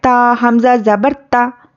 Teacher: हत्ता, ता हमज़ा ज़बर ता, तो हमज़ा साकिना को झटके से पढ़ना है।